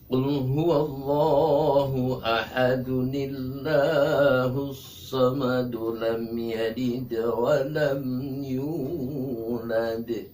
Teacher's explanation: Ayat 1 disambung dengan ayat 2, ayat 2 disambung dengan ayat 3 sampai ayat terakhir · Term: wasol